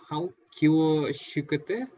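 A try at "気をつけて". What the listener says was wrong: Tsukete. This pronounced like tsu. Yeah, like kyo tsukete.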